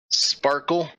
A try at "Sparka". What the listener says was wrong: Sparka. You'd never end a Lethi name with an E.